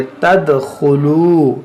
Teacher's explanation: दाल में कलकला करेंगे